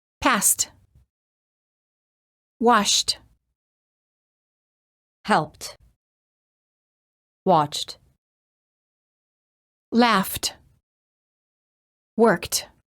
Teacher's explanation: If the last letter of the word ends in a voiceless consonant, the E is silent and the D is pronounced as T.